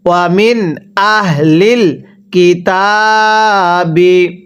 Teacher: নুন সাকিনের পরে যদি এরকম হামজা ইজহারে হরফ থাকে তাহলে নুন সাকিনটাকে স্পষ্ট করে পড়তে হবে